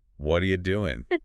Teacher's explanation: the U gets shortened to yah.